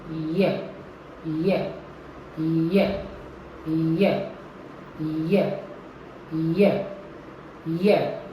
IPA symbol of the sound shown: j